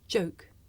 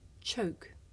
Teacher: the voiced sound that you hear at the beginning of the word joke and its voiceless partner that you hear at the beginning of the word choke